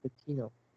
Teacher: The stress is more on the first syllable, right?